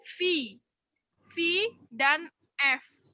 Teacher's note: suara yang terbentuk karena bibir bawah menyentuh gigi bagian atas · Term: labiodental